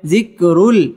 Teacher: ইদগামে বেলা গুন্নাহ তানবিনের বামে লাম আসছে গুন্নাহ ছাড়া পড়তে হবে